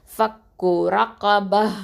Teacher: ரா ஃபத்ஹா ரா, காஃப் ஃபத்ஹா கா, இது ரெண்டுமே ஹெவியாக தான் உச்சரிக்கணும், வல்லினம்.